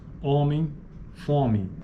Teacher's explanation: homem e fome são pronunciadas com vogais orais homem e fome formas como homem fome apresenta tipicamente uma vogal nasal na maioria dos dialetos do português